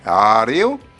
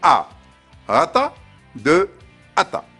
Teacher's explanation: Nous avons commencé à distinguer la voyelle mouillée, A, Reo, de la voyelle glottalisée A